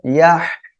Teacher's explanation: يحسب أن মালাহু আখলাদা, ماله أخلده ওকে, খেয়াল করুন, ইয়াহসাবুর ইয়াহ, হাটাকে গলা চেপে উচ্চারণ করতে হবে আর মুখ থেকে বাতাস বের হবে